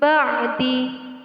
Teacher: nun mati bertemu dengan huruf ba dinamakan hukum bacaan iqlab cara membacanya nun mati diganti dengan huruf mim